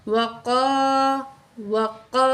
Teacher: واو کو ہم گول ہونٹ کر کے پڑھیں گے، قاف کو موٹا کر کے پڑھیں گے۔